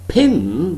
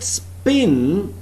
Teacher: In the word pin there is aspiration, but in the word spin there is no aspiration. P doesn't have some sort of plosiveness here.